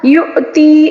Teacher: حمزہ کے اوپر جو ساکن آیا ہے نا، اس کو ہم نے جھٹکا دے کر پڑھنا ہوگا